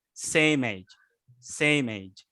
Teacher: You know what I mean by linking is the link disambung, itu maksudnya disambung suaranya. So same ends by M sound, same, and then link by age.